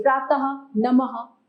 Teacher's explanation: अह का उच्चारण ह के समान होता है, इसे विसर्ग कहते हैं